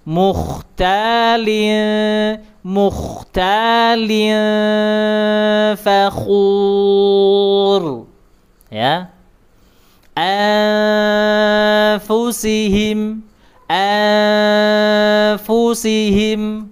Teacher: fa ah bibir bawah sama gigi atas fa diarahkan. Dengungnya tadi disamarkan kemudian diarahkan ke huruf fa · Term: ikhfa